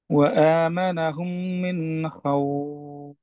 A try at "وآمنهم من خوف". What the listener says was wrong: আচ্ছা, আপনার কিন্তু অনেকটা খাউফ এইরকম বোঝা যায় আর কি। খ খৌফ মিন খৌফ। আর নুনের উচ্চারণটা আরেকটু নরম, যেন মিন খৌফ এই ধরনের না হয়। وآمنهم من خوف।